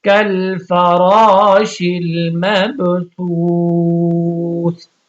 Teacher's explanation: اب یہاں پہ دیکھیں واو ساکن اور اس سے پہلے والے حرف پہ پیش ہے تو اس کو واو مدہ کہیں گے. اب یہاں پہ اگر آپ وقف کر رہے ہیں تو یہاں پہ مد عارضی ہوگی